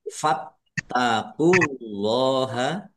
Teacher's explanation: Fattaqula tanya ada tasdidnya dibaca dobel ditekan dan ditahan biar tampak dobel · Allahnya dibaca tebal karena harakat di depannya dmah